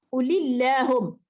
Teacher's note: Kalau ulillahum lafaz Allah juga ya, tapi oleh kerana sebelum Allah baris bawah, jadi kita kena baca tarqiq